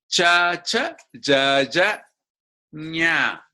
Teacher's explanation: the tongue tip goes to the roof it's called palatal